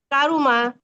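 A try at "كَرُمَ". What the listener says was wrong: রটা মোটা হবে একটু, কারুমা।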